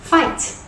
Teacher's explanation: It is powerful and aggressive. It goes from high to low, just like fight. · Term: pinyin tone number 4